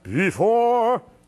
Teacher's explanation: the first syllable has to crescendo into the second syllable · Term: emphasizing the second syllable